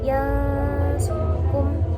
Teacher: huruf berikutnya ada huruf ikhfa yaitu shad. Jadi diantara itu ada dengung